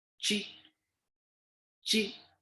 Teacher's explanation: it is usually sounded like ch with the curling of your tongue as you pronounce it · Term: letter q